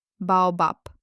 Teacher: But when the sound finds itself at the very end of a word, it gets too lazy to vibrate. The vocal cords go to sleep and the voiced be turns into the voiceless pe.